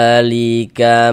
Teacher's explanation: Pertama di sini dza dibaca panjang. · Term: mad thabi'i